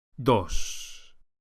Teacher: The Spanish D is softer than in English and is produced with the top of the tongue flat against the gum ridge, not with the tip of the tongue as in English.